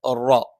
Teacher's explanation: റ നാവിന്റെ തലയുടെ മുതുക് മേലെ മുൻപല്ലിന്റെ മോണയിലാണ്.